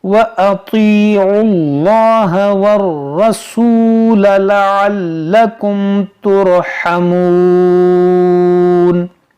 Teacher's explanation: ये आइन को लाम से मिला देंगे